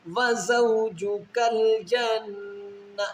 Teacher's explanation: واو ساکن سے پہلے زبر ہے، اس کو واو لین کہیں گے، واو لین کو ہم نے جلدی سے پڑھنا ہے۔